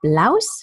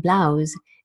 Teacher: ist Blouse mit dem stimmlosen S im Amerikanischen und Blouse mit dem stimmhaften S im britischen Englisch